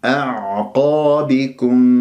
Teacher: النزول إلى وسط الحلق هذا مخرج العين أن تحس انزعاج في المخرج أن تحس كأنه عم تبلع شيء ويجري فيها الصوت فترة زمنية